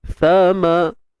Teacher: Huruf sa kita keluarkan hujung lidah kita sikit je, hujung lidah saja ya.